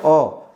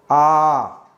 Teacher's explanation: अ से जस्ट दोगुना समय द्विमात्रिक जो है वो दीर्घ स्वर होता है। इसमें एक मात्रा का समय लगता है।